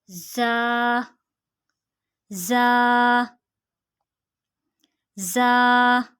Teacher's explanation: زا کا مخرج نوٹ کیجئے، زبان کی نوک اور دونوں دانتوں کے اندرونی کنارے سے